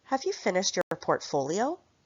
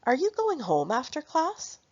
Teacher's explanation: Another common intonation pattern in English is a rising pattern for yes no questions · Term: rising intonation